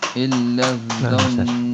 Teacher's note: Ditahannya di huruf nunnya, bukan di huruf sebelumnya.